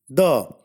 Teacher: Da is a voiced dental fricative.